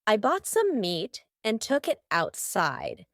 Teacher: the word outside has a t in the middle but because this word is kind of two words put together out inside we're going to have a stop there in the middle · Almost each of these words that end in T have a stopped T.